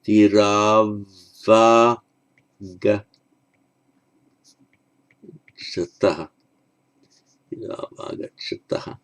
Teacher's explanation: the au, as in Virau, the two heroes, followed by a vowel, the au becomes an av, written as a long a with consonantal v.